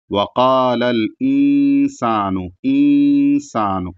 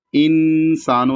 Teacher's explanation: انسان، یہ اخفا ہے جو کئی بار آ چکا ہے کہ یہاں پر نون ساکن ہے، نون ساکن کے بعد سین ہے جو کہ حروف اخفا کے 15 حروف میں سے ہے، تو یہاں اخفا کی طرح گننا کریں گے، یعنی پورے نون کو نہیں ادا کریں گے بلکہ تھوڑا سا ادا کر کے وہاں پر ناک میں آواز لے جائیں گے